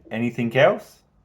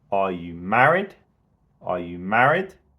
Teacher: So married has the most stress. You want to say it the loudest. Potentially there's a little dip just before you say married. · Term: rising intonation